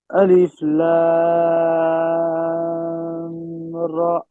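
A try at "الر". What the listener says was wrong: Alif Lam Ra. You have to make it longer than normally.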